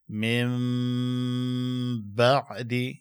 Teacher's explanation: ګوره دلته نون ساکن دی، وروسته ته با راغلی ده. دغه نون ساکن دا به په تلفظ کې په میم بدل کې